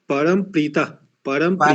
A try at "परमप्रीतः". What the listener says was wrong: परम भी नहीं है, परमा भी नहीं है, बीच में एक है ना, वो परमा प्रीतः।